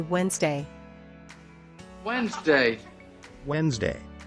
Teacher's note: skip the D and just say Wednesday